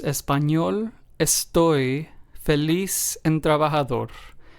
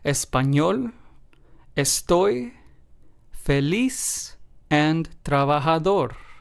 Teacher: in all four of these words we stressed the very last syllable because of course this is what this rule asks us to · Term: word stress